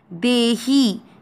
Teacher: ही की मात्रा बड़ी है, लंबा खींचेंगे।